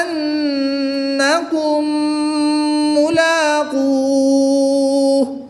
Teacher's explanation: میم ساکن کے بعد دوسری میم ہے تو یہاں پر ادغام شفوی ہوگا، میم میں غنہ کر کے پڑھیں گے، میم مشدد میں غنہ کر کے پڑھیں گے۔